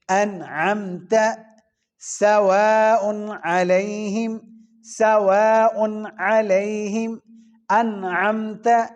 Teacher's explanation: عین حروف ہلکی میں سے آ رہا ہے، تو لہذا یہاں اس کے اوپر نہ ہی ادغام ہوگا، نہ ہی اس کے اوپر اخفا ہوگا، نہ ہی غنہ ہوگا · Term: اظہار